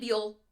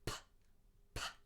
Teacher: the difference is whether it's voiced or unvoiced